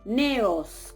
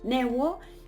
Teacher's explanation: En el medio de ellas, si observamos la raíz, estaba esa vau, neuo, y cae la vau y quedan simplemente esas dos vocales